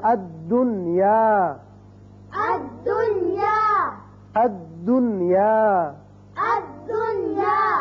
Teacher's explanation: یہاں یاد رکھیے کہ نون کا اظہار ہوگا، اسی قاعدے کا نام اظہار مطلق ہے۔